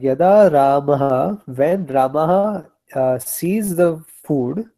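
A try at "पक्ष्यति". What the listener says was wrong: Pakshyati is? What you are saying is pashyati.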